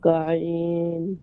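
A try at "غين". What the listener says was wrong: গইন গলার ভিতর থেকে না, গইন বাইরে থেকে, গইন।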